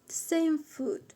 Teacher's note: I lower my voice. So to lower and rising things, we call them pitch.